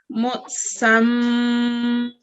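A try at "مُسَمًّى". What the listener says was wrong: One thing I've noticed is that you give a lot of jerk at places. Okay, so just make sure you don't give a jerk. It's just smooth recitation. Musamman. Okay, don't say musamma.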